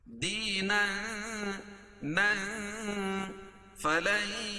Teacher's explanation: غیر اسلام دینا، دی یا مدہ اور تنوین کے بعد حروف اخفا کے 15 حرفوں میں سے فا ہے تو یہاں ناک میں آواز کو چھپا کر پڑھیں گے